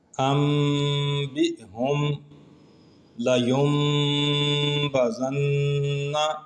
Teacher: نون ساکن کے بعد با ایک ہی کلمے کے اندر ہے، پھر بھی یہاں پہ اقلاب ہوا ہے